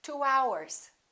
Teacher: in this case we don't put a little Y in there we put a little W sound